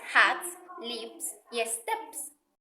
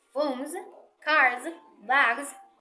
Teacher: cuando el último sonido del sustantivo singular es sonoro, es decir, que nuestras cuerdas vocales vibran, no pronunciaremos una S, aunque así se represente ortográficamente, pronunciaremos una Z, como en las palabras phones, cars, bags. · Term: fono Z